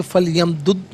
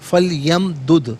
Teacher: فا لیمدد، فا پر زبر ہے، اس سے لام ساکن لام کے ساتھ ملائیں گے ناظرین، اور اس سے پڑھیں گے فل یمدد، اور آخر میں دال ساکن ہے لیکن حرف قلقلہ ہے تو آواز لوٹتی بھی محسوس ہونی چاہیے